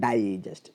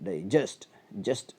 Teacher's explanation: stress വരിക തുടക്കത്തിൽ ഡൈ എന്നതിനാണ്